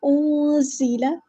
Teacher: زا کو سختی کے ساتھ ادا کرنا ہے، اور حروف استفیلیہ میں سے ہے تو ہلکی سی سیٹی بھی آئے گی ، اور باریک ادا کرنا ہے، انزل، اخفا ہمارا یہاں پہ